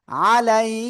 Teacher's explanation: ইয়া সাকিন ডাইনে জবর, লিনের হরফ তাড়াতাড়ি পড়তে হবে।